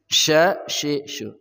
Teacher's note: syin ya dari tengah lidah